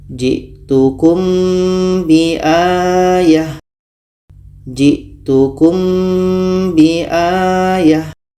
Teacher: ada mim mati bertemu ba. Ini kita baca samar dan dengung. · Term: ikhfa syafawi